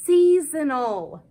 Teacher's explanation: the S often Says Z after a vowel and the O is making the schw sound Z season can